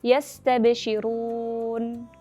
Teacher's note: Huruf nun bersukun pada akhir kata memiliki sifat bainiyah, maka ia lebih lama pengucapannya dibandingkan huruf ba bersukun dan yang bersifat syiddah. Dan juga huruf nun bersukun dibaca lebih singkat dibandingkan dengan huruf sin bersukun yang memiliki sifat rokhawah.